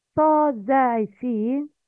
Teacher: Sa, zai, seen come from the tips of the tongue